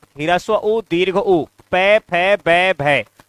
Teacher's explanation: ओष्ठ से उच्चरित होने वाले वर्ण कौन से हैं, ह्रस्व उ, दीर्घ उ, प, फ, ब, भ, ये वर्ण, इनका उच्चारण स्थान ओष्ठ होता है।